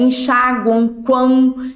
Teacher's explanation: orais e nasais já o tritongo somente nasal é enxagua quão ele sai tanto o ar pelo nariz quanto pela boca